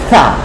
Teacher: সা পাতলা করে, সা একটু বাতাস বের করে দেন